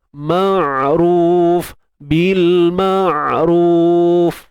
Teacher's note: Untuk ain sempitkan tengah kerongkong, sempitkan dia.